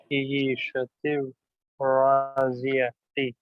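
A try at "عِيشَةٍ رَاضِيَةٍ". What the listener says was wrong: راضیتی نہیں بولا تھا میں، کل بولا تھا کہ گول تا پہ اگر رکنا ہے تو راضیہ آخر میں ہا کی آواز آنا. راضیہ.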